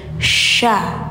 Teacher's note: tengah lidah angkat ke atas. Ada menyebar angin juga sya. Jadi beda sya tsa tsa sya beda ya.